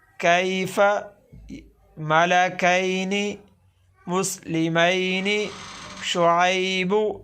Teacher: یا لین کی آواز کو نرمی سے ادا کرنا ہے، کھینچ کر نہیں پڑھنا جی